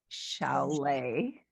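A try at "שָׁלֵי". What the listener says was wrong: No, it's that same vowel, honey. 2 dots.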